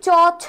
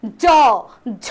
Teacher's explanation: আর যেটাকে আমরা বেশি পরিমাণে জোর দিচ্ছি চ ছ অঘোষ জ ঝ একটু বেশি পরিমাণে জোড় দিচ্ছি জোর দিয়ে আমি উচ্চারণ করছি সেটাকে আমরা বলি ঘোষ ধ্বনি